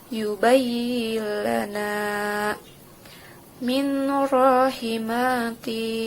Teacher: maka membacanya harus diidghamkan tapi tidak memakai gunnah